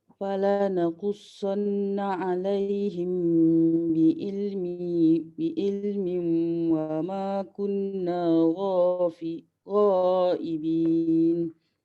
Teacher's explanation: Mim jumpa ba perlu didengungkan. · Tanwin bertemu waw. Topik kita sekarang tanwin bertemu waw. Perlu didengungkan. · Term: idgham ma'al gunnah